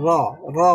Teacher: তাকরির মানে আওয়াজটা মানে ডবল হয় না, কিন্তু মনে হয় যেন ডবল হচ্ছে। যেমন র, র উচ্চারণ করার সময় এক ধরনের ভাইব্রেশন হয়, যার কারণে মনে হয় যে ডবল হচ্ছে, কিন্তু আসলে ডবল হয় না, ডবল করাও যায় না।